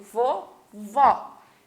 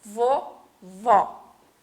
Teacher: Eu falo, né, mais aberto, vovó.